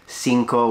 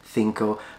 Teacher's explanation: he says cinco with an S sound as opposed to the way they pronounce it in Spain